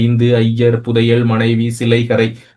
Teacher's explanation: ஐ அப்படிங்கிற எழுத்து தன்னுடைய 2 மாத்திரையில இருந்து ஒரு மாத்திரையில ஒலிச்சிச்சுன்னா அது ஐகார குறுக்கம்.